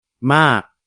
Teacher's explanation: Maintenant, côté tonalité, il n'y a toujours pas de signe de tonalité. La syllabe se termine par un son explosif, donc elle est morte. La consonne initiale est basse, la voyelle est longue, donc le ton est descendant.